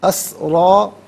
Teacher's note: را پر کھڑا زبر ہے، را کو پر کر کے پڑھا جائے گا